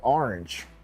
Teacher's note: Everybody here makes fun of how I say orange, because I say it with like AR rather than OR.